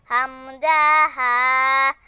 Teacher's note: ১ নম্বর মাখরাজ, হলকের শুরু হইতে হামজা হা। ২ নম্বর মাখরাজ, হলকের মধ্যখান হইতে আইন হা।